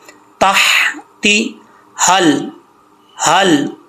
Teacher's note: अदनिन तजरी मिन तहतिहल, यहाँ पे हा बरीक है, तहती, ताहा ज़बर ताह, इस हा का ताल्लुक सीने से नहीं है, और आगे जो हा रही है इसका ताल्लुक सीने से है, ठीक है। इस हा का ताल्लुक हल्क से है।